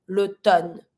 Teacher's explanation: You're just going to avoid the M. L'automne. You don't pronounce the M.